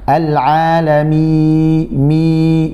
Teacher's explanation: Jadi suaranya bukan dari khayshum, bukan dari rongga hidung, tapi rongga mulut, yaitu al-jawf ya.